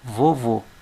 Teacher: duas sílabas Então vou usar esses dois espaços aqui ó Vovô olha sílaba tônica de vovô é a última